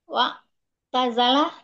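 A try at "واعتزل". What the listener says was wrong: Kenapa wa'tazala? Nah, wa'tazil.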